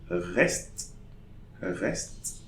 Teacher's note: So we say reste. So I'm pronouncing the last consonant but not the E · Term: silent E